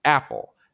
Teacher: in this word the first syllable is stressed and the second syllable is unstressed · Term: stresses